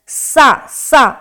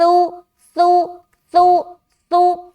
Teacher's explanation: حرف سا میں سیٹی کی آواز نہیں آنی چاہیے